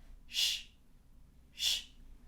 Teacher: the SH is also unvoiced, but the tongue goes up, and there's almost this cup-like shape that the tongue makes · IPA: /ʃ/